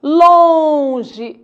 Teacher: esse O foi nasalizado pelo M